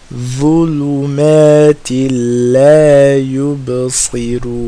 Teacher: Same as dhal, the front tip of the tongue touching the sharp part of the teeth, of the top front two teeth